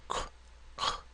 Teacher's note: And the Q sound k, k, is further back.